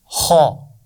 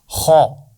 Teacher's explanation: یعنی اس کا مخرج ہے گلے کے اوپر کا حصہ۔ یہاں سے دونوں حروف کی آوازیں غین اور خا کی آوازیں ادا ہوتی ہیں، تو خا کا مخرج ہے گلے کے اوپر والا حصہ۔